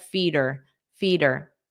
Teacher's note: native speakers often drop the H and it just sounds like but you have to attach it to the last sound.